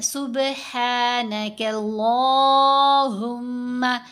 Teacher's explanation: لام کو لمبا بھی کیا، لام کو موٹا بھی پڑھیں گے